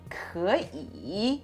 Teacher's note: when two third tones occur together, the first one becomes a second tone